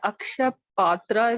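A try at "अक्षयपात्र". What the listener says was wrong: That is Akshaya Patra. It is not Aksha. Akshaya is something that does not decline, that does not, no Kshaya, that doesn't have a, end. It does not. Yeah, that is Akshaya. This is Aksha.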